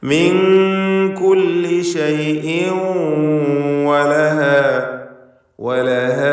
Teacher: തൻവീനും ശേഷം വാവും ഇദ്ഗാം ബിഗുന്ന. വാവിലേക്ക് തൻവീനിനെ ലയിപ്പിച്ച് മണിക്കണം. ഇദ്ഗാം ബിഗുന്ന നാഖിസ്.